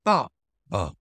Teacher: father is going to be B fourth tone falling